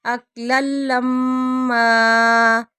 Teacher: ولا تحاضون علی طعام المسکین وتأکلون التراث اکلا لما، اکلا لما تنوین کے بعد لام آ رہا ہے، غنے کے بغیر ادغام ، اکلا لما وتحبون المال حبا جما، حبا تنوین کے بعد